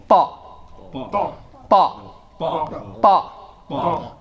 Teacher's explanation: And you strike right there at the gum line, just above the teeth.